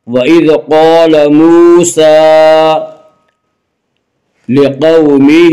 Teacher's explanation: قاف کو پر پڑھیں گے، قاف حروف مستعلیہ میں سے ہے، حروف مستعلیہ 7 ہیں جن کا مجموعہ خص ضغ تنقیز ہے، یعنی خا صاد ضاد غین طا قاف ظا، یہ 7 حروف ہمیشہ ہر حال میں پر پڑھے جاتے ہیں۔